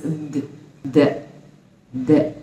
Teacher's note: I feel the vibration in my vocal cords when I pronounce this th